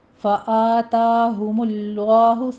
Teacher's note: فآتا میں فتح قائمہ ہے، دونوں جگہ آواز برابر رکھنی ہے، 2 حرکتوں کے برابر لمبا کھینچنا ہے۔